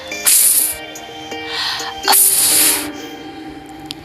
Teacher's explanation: The first sound in fin is created by bringing the lower lip close to the upper teeth in a constriction of close approximation. This sound is a voiceless labiodental fricative, described as f, f.